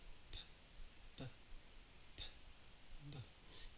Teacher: Your lips are coming together. They're stopping the airflow, and then they're releasing it. So they're kind of building up pressure behind your lips, and then you let out the airflow.